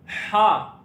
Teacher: हा हरूफे हलकी में से हलके दरमियानी हिस्से से अदा होगा